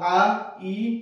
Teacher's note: रस्व स्वरांच्या तुलनेत हा जो दीर्घ स्वर आहे यांचा उच्चार लांबट असतो आणि कालावधी सुद्धा काय असतो रे बाबा जास्त असतो